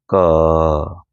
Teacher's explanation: इस क बोलने में आखिरी में अ आ रहा होगा